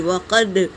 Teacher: واو اور کاف حرکت ہے، جل پڑیں گے، دال پر سکون ہے تو یہ قلقلہ کا قاعدہ ہے، پڑھتے وقت آواز ٹکرائے گی۔